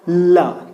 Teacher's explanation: जीभ जो है वो ऊपर को टच करता है और वायु बगल से निकलती है, ल। आप बोल कर दे ल, सीधा नहीं निकलता है बल्कि बगल से निकलता है। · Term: पार्श्विक व्यंजन